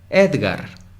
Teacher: Ed es la sílaba tónica.